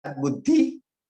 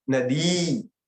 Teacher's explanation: बुद्धि में हमने छोटी ई रखी और नदी दीर्घ ई रखी